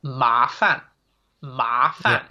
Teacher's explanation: so that ma, you can hear, is the second tone. It's the rising tone. Ma, so it's kind of like you're asking a question.